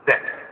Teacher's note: Make sure that you don't put the final T. It's Zet. And make sure that you don't do they, like they write in the papers.